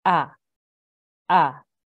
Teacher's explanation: the letter originates from the bottom of the throat near the chest. There should be no trace of the Ayn sound in its pronunciation. So the Hamza, the sound of the Hamza is ah, ah, not ah, which is from which is your Ayn sound.